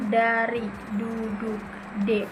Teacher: ujung lidah menyentuh alveolar ridge, tulang di belakang gigi atas.